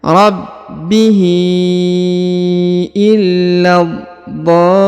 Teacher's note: Rabbihi, huruf hi dipanjangkan 5 harokat karena di atasnya terdapat tanda bacaan panjang 5 harokat yang ini ya.